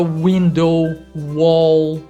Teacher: Ela vem desde aqui, ó, que é a ponta da língua, até a parte de trás, a parte posterior da boca aqui. Quando a gente produz o som do W, a língua vai se abaixar na frente e se levantar atrás, praticamente bloqueando a passagem de ar aqui.